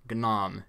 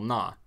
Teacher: the na in modern Tibetan now carries a low tone which makes sense as it's a voice syllable and certainly not